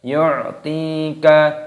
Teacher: ya sukun matabi'i dua ketukan dipanjangkan dua ketukan